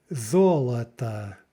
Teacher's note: First syllable is stressed, but the second two are not.